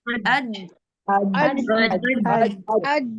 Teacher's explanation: आवाज रुक जाती है। आज कहते ही बिल्कुल बंद हो जाता है, आवाज रुक जाती है। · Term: शिद्दत